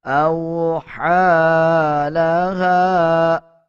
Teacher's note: حمزہ کو واو کے ساتھ ملا کے پڑھا جائے گا، ہا کے اوپر کھڑا زبر ہے، 1 سیکنڈ لمبا کر کے پڑھا جائے گا، اور ہا کے بعد یہ یا ہے اس کو سکپ کر دیا جائے گا۔